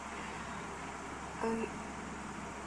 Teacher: you pull your tongue to the back and try to pronounce a sound between I and U as you push your tongue from the back up into the front.